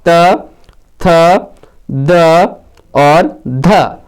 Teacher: ये सभी वर्ण जो है वो दंत वर्ण है, यानी दांत से इनका उच्चारण होता है